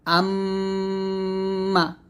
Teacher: 1 থেকে 2 আলিফ পরিমাণ টান দিয়ে গুণনাটা আদায় করবে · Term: ওয়াজিব গুন্না